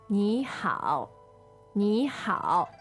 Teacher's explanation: the first character n i third tone followed by h a o third tone